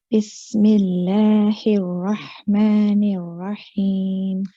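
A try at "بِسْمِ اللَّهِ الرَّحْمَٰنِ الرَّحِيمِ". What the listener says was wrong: Okay, so for you, the letter Ra, we need all the letter Ra's here to be heavier.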